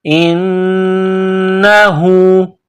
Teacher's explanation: نون مشدد ہے تو آواز ناک میں پیدا کرنی ہے